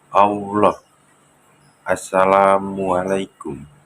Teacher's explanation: Nah, yang pertama durasi lebih panjang. Konsonan Geminat diucapkan lebih lama dibandingkan konsonan tunggal. Perpanjangan ini bisa terasa seperti ada penahanan atau tekanan tambahan pada konsonan tersebut.